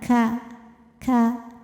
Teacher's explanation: Kalau kaf yang hidup atau berharokat, maka kafnya ini angin dan suaranya keluarnya barengan. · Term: kaf yang berharokat